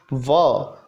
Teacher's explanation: व दंत और होठ, क्योंकि दांत और होठ की सहायता से ये बोला जाता है